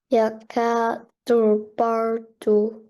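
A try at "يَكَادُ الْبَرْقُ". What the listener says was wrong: Barku. This is the qaf.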